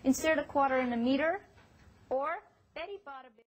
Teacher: the Americans flap the t sound? You know, it sounds like an almost d sound